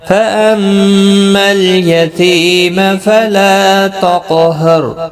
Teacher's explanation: پر غنہ ہوگا، تی یا مدہ ہے، لا الف مدہ ہے، قاف پر پڑا جائے گا، اس پر قلقلہ بھی ہوگا ، را بھی پر پڑا جائے گا زبر کی وجہ سے · میم مشدد پر غنہ ہوگا